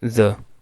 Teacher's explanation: Breeze, in breeze we have this sound z, it is a fricative sound.